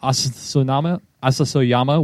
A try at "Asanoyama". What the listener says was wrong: Asanoyama? You said Asasoyama.